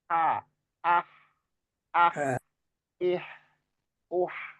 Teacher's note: jadi suaranya lebih tipis dan lebih bersih, anginnya lebih banyak, itu H yang di tengah-tengah.